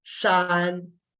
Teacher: So the initial sound dictates you as to where you have to put your tongue. You put the tip of your tongue lightly against the palate, and then you blend into the final sound, AN. AN is pronounced as an.